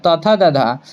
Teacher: त थ द ध का हमारा हो जाएगा दंत से